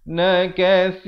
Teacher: Di sini tanwin bertemu mim, idgham bi gunnah, masuk beserta dengung 2 harakat.